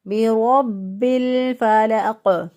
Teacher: پر پڑھنا تھا، را کے اوپر زبر ہو تو پر پڑھتے ہیں، موٹا پڑھتے ہیں، تو ہم نے اس کی صفت چینج کر دی، اس کو باریک کر دیا، تو غلطی ہو گئی۔